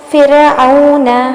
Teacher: یعنی را ساکن سے پہلے جو کسرہ ہوتی ہیں تو اس را کو ہم باریک پڑھتے ہیں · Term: را کی ترقیق